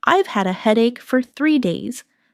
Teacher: Stress headache and 3 days.